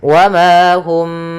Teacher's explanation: Yaitu karena huruf mim ini berkenaan dengan makhraj daripada huruf syafah, ya, makhraj yang kita keluarkan dari syafah kita, dari bibir kita, sehingga ketika melafalkan mimnya agak dirapatkan, wa ma hum, tapi tidak serapat mim ketemu mim. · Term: ikhfa syafawi